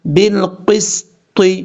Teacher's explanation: با کو لام سے ملائیں گے، بیچ میں الف کو چھوڑ دیں گے. با لام زیر بل، قاف سین زیر قس، طا زیر طی.